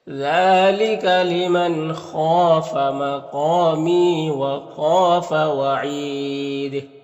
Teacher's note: وعید میں وقف کریں گے تو مد عارض وقفی ہوگا، دال میں قلقلہ ہوگا · یہاں پر نون ساکن کے بعد خا ہے حروف مستعلیہ حروف حلقی میں سے تو نون میں اظہار حقیقی ہوگا، خا حروف مستعلیہ میں سے پر پڑھیں گے اور الف مدہ ہے، ایک الف کے برابر کھینچیں گے، قاف بھی حروف مستعلیہ میں سے اور یہاں پر الف مدہ ہے، میم میں یا مدہ ہے اور خا حروف، یہاں پر بھی خا حروف مستعلیہ میں سے اور الف مدہ ہے۔